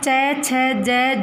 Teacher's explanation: जो च वर्ग है ना उसको हम कठोर तालव्य भी बोल सकते हैं